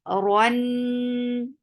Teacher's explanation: Ra is heavy for the open jaws attached with noon. Noon will get sifa of gunna, and this is akmal gunna. Give nice gunna here. And your gunna is keeping sound in your nose. Run, and fatha is very short.